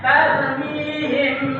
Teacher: mim mati bertemu dengan huruf ba. Maka ingat, ditekan cara membacanya. Tarmihim, ya, ditekan bihinjar. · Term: ikhfa syafawi